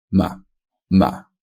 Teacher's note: if what precedes the fifth tone is a low tone such as the third tone ma ma then fifth tone after it will be usually a high version of itself